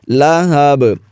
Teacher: با پر وقف کی حالت میں قلقلہ کریں گے